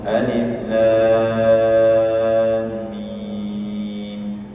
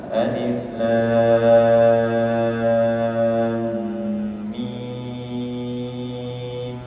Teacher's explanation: di antara lam dan mim itu ada gunah karena lam ada mim sukun